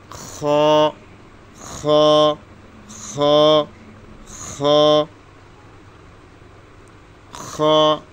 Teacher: হলকের শেষ হইতে খ